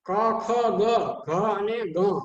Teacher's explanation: એને કંઠ્ય કહેવામાં આવે છે, એ કંઠ દ્વારા બોલાવવામાં આવે છે